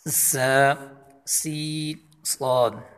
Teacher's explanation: زبان کا سرا نیچے والے 2 دانتوں کے ملنے سے، یا نیچے والے 2 دانت ان کے ملنے سے ادا ہوتا ہے، بالکل ان تینوں حروف میں سیٹی اسی لیے نکلتی ہے۔